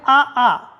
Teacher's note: आ आ तो दोनों कंठ से है शुरुआत कंठ से है